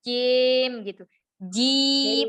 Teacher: Biasanya ya, yang ada di kasroh yang ada di akhir atau kita saat waqaf, itu biasanya itu kita membacanya agak imalah. Imalah itu miring. Jadi hurufnya enggak jadi i tapi e.